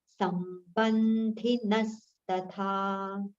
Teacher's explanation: the aghats on letters sa, ba and na are prominent